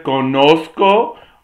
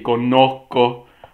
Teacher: así que puedes decir conozco O puedes aspirar y conozco